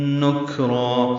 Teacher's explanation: الف مدہ ہے، 2 حرکات لمبا کریں گے، یہ مد عوض بنے گی، 2 زبر پہ جب وقف کرتے ہیں تو الف مدہ بن جاتا ہے ، مد عوض کہتے ہیں اسے۔ اور بہت سی بستیوں والے